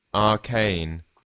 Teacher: the A is a bit longer in British English, in my opinion.